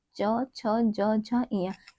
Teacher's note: हमारा पूरा च वर्ग जो है हमारी तालु को स्पर्श करता है।